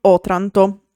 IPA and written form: ˈɔtranto (Otranto)